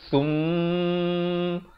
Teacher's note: ibtidak terus pada thum, hujung lidah. Bukan sum. Ramai baca sum.